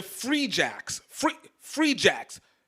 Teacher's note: free free Jacks big first soft second syllable